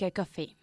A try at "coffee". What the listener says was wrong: Coffee, no café. Coffee. It's not French.